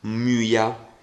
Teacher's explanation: in questo caso Y conserva il suono della u francese